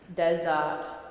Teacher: we're not going to pronounce the r in the middle